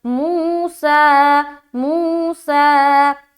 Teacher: موسیٰ، میم وا پیش مو، لیکن چونکہ یہاں پر کیا ہے واو ساکین ہے اس سے پہلے پیش، تو یہاں پر کیا ہو گیا واو مدہ ہو گیا، اس کو کھینچیں گے ایک الف کی مقدار کے باقدر